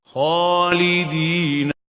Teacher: the kha has fatha. So it is having the hukum of tafkheem.